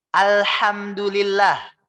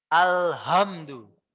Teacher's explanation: H yang dari tengah-tengah sini, Pak. Tengah-tengah tenggorokan. H. Alhamdulillah. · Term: H yang tipis